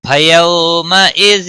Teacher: واو لین ہے، تھوڑا نرمی کے ساتھ کھینچ کر پڑھیں گے